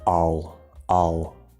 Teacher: when we say all, we could fully pronounce the L. Normally we don't. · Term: silent L